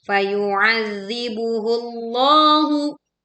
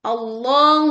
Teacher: Tebalkan huruf lam dalam lafdul jalalah karena didahului oleh dammah.